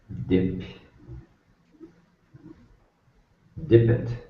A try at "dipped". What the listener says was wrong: Okay, so you said it almost like you're making 2 syllables out of it. Make sure that you keep it 1 syllable. Dipped, dipped, dipped. First column, yes, because the p sound is up in your mouth, and you can't get down to a D if you're up in your mouth, so you say a T, because that's what happens.